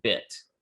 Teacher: E and I, which are both high front vowels